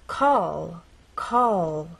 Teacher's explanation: our tongue pressed against the bump in words like call call as you finish the word the tongue does not drop down it stays pressed against that bump